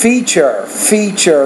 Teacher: that tu sound is a CH sound